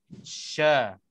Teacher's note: Tapi kalau kita betul-betul perhatikan shin itu, waktu kita nak sebutnya, tengah lidah kita bahagian ini dia akan terangkat, bahagian tengah-tengah lidah ini terangkat untuk nak tersentuhnya dengan langit keras atas bahagian tengah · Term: huruf shin